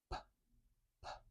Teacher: I'm putting my two lips together and I'm building up a little bit of pressure behind my lips and then letting the air explode out